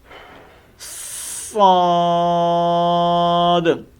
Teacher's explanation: صاد کے اندر ہم نے سیٹی دینی ہے، موٹی سیٹی دینی ہے، اور اس میں جو غلطی ہوتی ہے وہ یہ ہے، پڑھتے ہیں سواد سواد۔